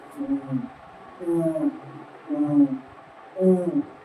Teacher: जीव का पीछे वाला हिस्सा कार्य करता है